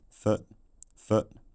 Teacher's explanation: the foot vowel has centralized and lost a lot of its lip rounding.